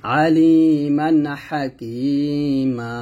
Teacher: দুই হারকাত পরিমাণ টেনে পড়তে হয় অর্থাৎ এক আলিফ পরিমাণ আমরা টেনে পড়বো